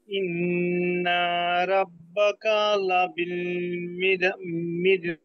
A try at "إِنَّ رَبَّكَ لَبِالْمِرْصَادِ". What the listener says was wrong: যে ইন্নার মধ্যে ইন্না গুন্না হয়ে আবার লম্বা হয়ে গেছিল এটা কিন্তু মাদ নাই হ্যাঁ ইন্না হবে জি ঠিক আছে সুন্দর হয়েছে